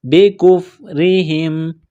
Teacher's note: قلقلہ کریں گے، عجل بکفرہم، کاف کو باریک کرنا ہے، بکفرہم، را کے نیچے زیر ہے، را کو باریک کریں گے